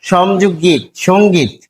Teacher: গ হচ্ছে ঘোষ অল্প প্রাণ ধ্বনি, এটি আবার ক বর্গের ধ্বনি, ক বর্গের যে 5টি ধ্বনি এর মধ্যে গ একটি, ফলে আমরা পাচ্ছি সমযোগ এখানে গীত, সঙ্গীত।